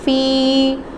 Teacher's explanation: یا ساکن سے پہلے زیر آ گیا ہے تو یا مدہ ہو رہا ہے, اس کو لمبا کریں گے